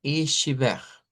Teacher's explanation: Es una tendencia en el portugués de Brasil que muchas veces la T se convierte en CH. H, la T pronunciada como CH.